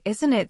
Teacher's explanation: Do you connect the words smoothly? Like isn't it sounding almost like one word?